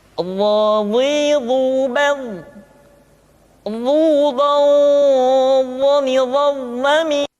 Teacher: pengucapan huruf dha diucapkan dengan menyentuhkan ujung lidah dengan dua gigi seri bagian atas